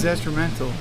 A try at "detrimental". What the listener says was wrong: It is detrimental. You said detrimental. No, it's detrimental. There's no S. It's not detrimental.